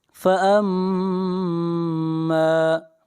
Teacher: میم مشدد ہے، میم کے اوپر غنہ کریں گے